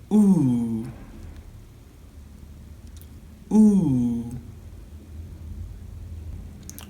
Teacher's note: It's a back-closed vowel sound. It's also a long monophthong. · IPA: /u:/